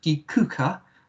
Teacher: We've got the U with the umlauts, giving it that really short sound, die Küche, and that CH meaning the K sound, die Küche.